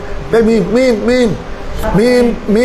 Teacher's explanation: মিম উচ্চারণ করার সময় 2 হুঁট লেগে যায় শফত থেকে। শফতের মানে হুঁট, তো মিম বের হয় 2 হুঁট থেকে, কথা বলছো।